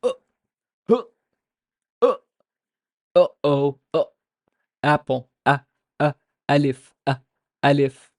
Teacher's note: English words beginning with vowels are often pronounced with a glottal stop, but we're conditioned to it and do not hear it.